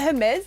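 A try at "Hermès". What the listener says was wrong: I think the H is silent. Isn't it? Isn't it Hermes? Hermes.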